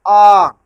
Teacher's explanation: लेकिन मुख नहीं वहां कुछ ऐसे वर्ण है जो आप केवल कंठ माने केवल गले से निकलता है। आ ना जीभ काम कर रही है ना दांत काम कर रहा है कुछ नहीं कर रहा है। केवल मुंह खुला और डायरेक्ट आवाज बाहर निकल गई।